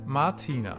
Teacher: you can hear that the R is almost not pronounced at all